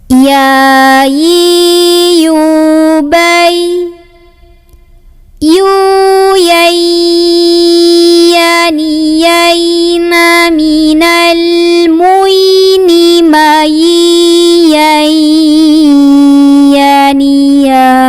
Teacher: Huruf ya keluarnya dari tengah lidah bertemu dengan langit-langit tengah. Nah, ketika ya-nya sukun punya sifat namanya layin, jadi lembut suaranya, bay, ya.